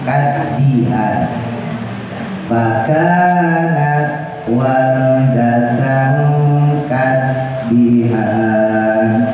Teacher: Kadi di ujung lidah taruh di atas ya, ujung lidah taruh di langit-langit yang keras.